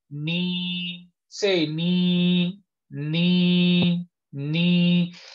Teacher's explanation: as soon as your tongue has pronounced noon and it's going towards ya, the middle of your tongue will rise